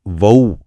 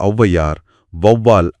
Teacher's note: ஔ அப்படிங்கறத உச்சரிக்க உங்க உதடுகள் ரொம்ப குவிஞ்சு வரணும். இது ஒரு கனமான ஒலி கலவை. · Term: ஔகார குறுக்கம்